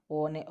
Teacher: ઓ અને ઔ છે એ કંઠ અને હોઠમાંથી કંઠોષ્ઠ્ય કહેવાય.